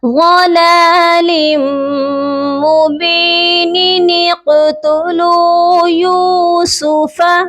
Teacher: قاف ساکن ہے، قاف کو آپ نے قلقلہ کر کے پڑھنا ہے